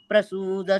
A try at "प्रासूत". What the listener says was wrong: அத பிரசூத்த இல்ல, பிராசூத்த. பிராசூத்த